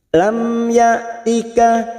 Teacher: hamzah sukun jangan samakan dengan ain. Hamzah sukun ini memiliki sifat siddah